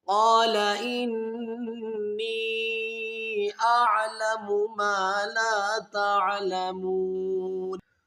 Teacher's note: व नुक़द्दिसु लक, क़ाल इन्नी अअलमु मा ला तअलमून, क़ाल इन, यहाँ पर नून मुशद्दद है, यहाँ पर गुन्ना करेंगे, फिर यहाँ पर नून या ज़ेर नी को तीन अलिफ की मिक़दार खींचेंगे क्योंकि इसके ऊपर तीन अलिफ़ी मद है।